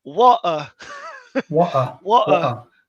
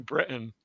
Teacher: That T that's not really a T, that's just breaking the vowels